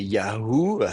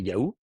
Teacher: il y a plus besoin de le noter le h on le prononce plus · Et donc on se dit le he est tombé. Yahoo le he moi je force la prononciation mais si vous prononcez vite ça fait yaou